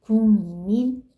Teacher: 기억은 비음이 아니에요. 근데 뭘로 바뀌었어요? 비음인 이응으로 바뀌었죠. 그쵸? 비음이 아닌 게 비음이 됐으니까 이런 것이 비음화가 되는 거죠.